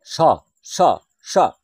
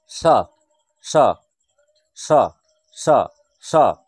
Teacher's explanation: কারণ এটি উচ্চারণের সময় আমাদের যখন উচ্চারণের শ্বাসবায়ু বেরিয়ে আসছে, যখন ভাষাটি বেরিয়ে আসছে, শব্দটি বেরিয়ে আসছে, তখন এই উচ্চারণের সময় জিভ উপরের যে পাটির দাঁত রয়েছে সেই দাঁতে স্পর্শ করে, সেই দাঁতে স্পর্শ করে বলে এই স্বর নাম হচ্ছে দন্তস্ব।